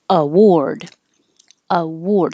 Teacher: the first a changes to uh because it's not stressed the second a sounds like an o r award award so